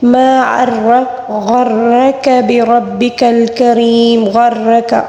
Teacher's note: غرک غین کو بھی پر پڑھیں گے، را کو بھی پر پڑھیں گے ، ٹھیک ہے، اور کاف کو باریک پڑھیں گے، بربک الکریم،